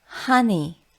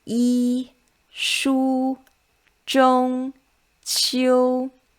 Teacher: So the first tone is a flat one.